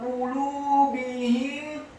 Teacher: huruf qafnya dibaca tafkhim tebal dhammah satu harokat, huruf lamnya dibaca tipis, dhammah dua harokat karena setelahnya ada wawu sukun.